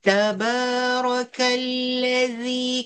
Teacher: Keluar lidah pada zi. Jangan baca lazzi.